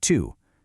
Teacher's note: the tongue is in that exact same E position, but the lips are rounded, like you're about to whistle, and that gives you the U sound in the French word tu.